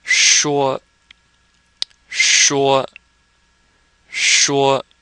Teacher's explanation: with this sh your tongue is curled and you're making an sh sound